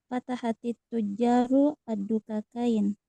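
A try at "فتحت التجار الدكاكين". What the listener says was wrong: Kok fatahatit tujaru? Kenapa ditambahkan ta?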